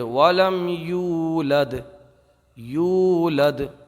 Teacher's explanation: یہاں پر واو میں واو مدہ ہوگا، کیونکہ واو ساکن سے پہلے جب پیش ہو تو واو مدہ ہوگا۔ یہاں پر ہم ایک الف رکیں گے، ایک الف کھینچ کے پڑھیں گے۔